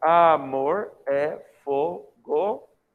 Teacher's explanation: Porque a palavra terminou em vogal e a outra palavra começou em vogal. Então você contou essas duas sílabas como se elas fossem uma só.